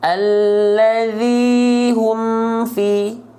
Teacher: mim sukunnya dibaca jelas dari bibir